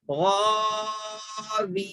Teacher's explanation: نون کو نہیں کھینچنا نا جلدی پڑھنا غین کو کھینچنا ہے واو یا زیر وی کو کھینچنا ہے نون زبر نا نہیں